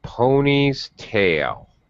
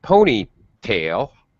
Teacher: pattern it's more a pony's tail i pulled the pony's tail notice how i go up on tail instead of ponytail pony high tail low in the compound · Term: compound noun pitch pattern